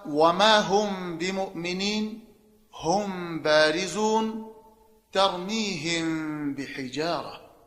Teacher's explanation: هر کله چې میم ساکن وي او د هغې نه وروسته د با حرف راشي نو آلته به اخفای شفوي کیږي